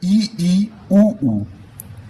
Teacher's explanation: ऐसे स्वर जिनका उच्चारण करते समय मुख लगभग हमारा बंद रहता है, यानी कि क्लोज्ड रहता है, जैसे ई, ऊ। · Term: संवृत्त